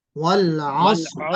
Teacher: اگر آپ رک رہے ہیں تو را کو موٹا پڑھیں گے